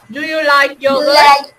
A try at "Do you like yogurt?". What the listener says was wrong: Thứ nhất là các con đọc ngắn gọn vào một chút và thứ hai là các con lên giọng cuối câu cho cô nè.